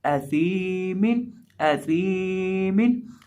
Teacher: या साकिन हो और उससे पहले ज़ेर हो तो उसको याई मद्दा कहते हैं, और उसको एक अलिफ के बराबर खींच के पढ़ते हैं। इसलिए यहाँ हम सा को खींच के पढ़ेंगे, सा को लंबा करके पढ़ेंगे।